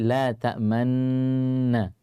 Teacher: Ini ta'manuna berarti dua nunnya bersama-sama berharakat, maka dibaca dengan tadi ismam. Ya, dengan memonyongkan kedua bibir. Yang pertama didengungkan lalu dimonyongkan.